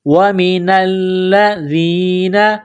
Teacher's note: لام مشدد ہے تو لام کو دبانا ہے، سختی کرنی ہے، دال کو نرم کرنا ہے، زبان باہر نکالیں گے دال کو پڑھتے وقت